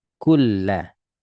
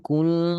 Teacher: nun langsung otomatis berubah jadi lam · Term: lebur sempurna